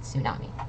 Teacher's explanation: the t is not pronounced it's just tsunami